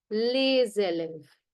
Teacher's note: Normally, S towards the end is going to be silent. However, if it's followed by a vowel, it becomes les élèves. S has a Z sound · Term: liaison